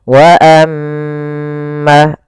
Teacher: Maka perhatikan di sini wa amma kembali lagi ada bacaan gunah yaitu ketika huruf mim berharakat tasydid maka dibaca dengan bacaan gunah. Cara membacanya suara m ya ditahan dua harakat.